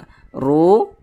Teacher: huruf ro dibaca tafkhim dibaca tebal karena dia memiliki tanda baca domah